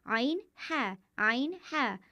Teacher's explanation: आइन हा हलक के दरमियानी हिस्से से अदा होते हैं